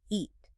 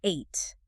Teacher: You go from a long e in eat where your mouth makes like a smile shape to a long a in ate where your mouth opens up more.